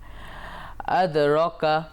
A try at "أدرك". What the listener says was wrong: রতে টান হবে, কিন্তু তুমি টানোনি। দর্শক এই জায়গায় একটু বলে রাখতে চাই যে খাড়াজা বোরখারাজের উল্টা পেশ একালিপ টেনে পড়তে হয়।